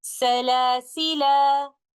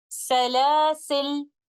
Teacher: The first of them is stopping with alif and pronouncing the word like this, Salasila. And the second one is dropping the alif and reciting the lam with a sukoon like this, Salasil.